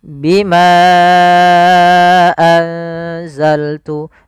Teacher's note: Maka bimanya kita panjangkan sepanjang 4 harokat. Bagaimana? Bima anzaltu bima panjang dulu. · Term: mad jaiz munfasil